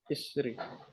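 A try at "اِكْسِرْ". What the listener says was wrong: Kebalik hurufnya. Iksir.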